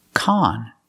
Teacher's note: We use the short ah sound like hot and stop.